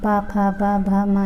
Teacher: ये सभी ओष्ठ से बोले जाते हैं